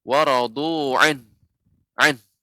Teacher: ketika membaca waradu'an, maka harus ada suara ha. Maka ada, karena pada asalnya adalah waradu'anhu, sehingga tidak cukup waradu'an, bukan.